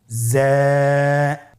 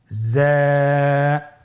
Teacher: যা উচ্চারণ করার সময় অবশ্যই এক আলিফ টেনে পড়তে হবে এক আলিফ টেনে পড়তে হবে হরফটি বারিক হরফ এজন্য পাতলা করে উচ্চারণ করতে হবে হরফটির মাখরাজ আপনারা দেখতে পাচ্ছেন জিহ্বার আগা সামনের নিচের দুই দাঁতের পেট ও আগার সঙ্গে লাগিয়ে উচ্চারিত হয়।